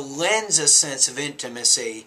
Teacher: you don't want to pause after the word lens you want to link that to the next word the next sound which is the article a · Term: blending